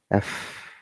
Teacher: letter f is unvoiced which means the vocal chords do not vibrate during its production and is counterpart to the voiced v sound so f v